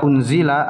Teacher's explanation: di lafaz unzila ada Nun bertemu dengan Za dibaca ikhfa atau ikhfa Hakiki dengungnya tiga harakat